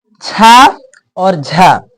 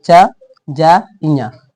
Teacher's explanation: छ और झ इसमें ज्यादा टाइम लग रहा है और तुम बोलो च ज ञ इसमें कम टाइम लग रहा है